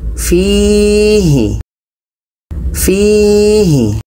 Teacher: Fi ini dibaca panjang karena ada ya mati sebelumnya baris bawah.